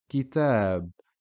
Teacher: Notice how the extension or the lengthening of pronunciation comes after the ta, because that's where the aleph is. After the ta, which carries a fatha.